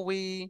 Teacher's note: ওয়াউজের বি পড়ার সময় ঠোঁট দুটো কাছাকাছি আসবে কিন্তু মিলবে না।